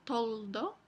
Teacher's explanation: después de lateral Como por ejemplo toldo es una oclusiva también